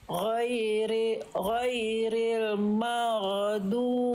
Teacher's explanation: Ghain sukun punya sifat namanya rokhwah Bunda. Rokhwah itu artinya mengalir dia suaranya. Ghairil maghdu, ngalir suaranya konsonan bukan ge.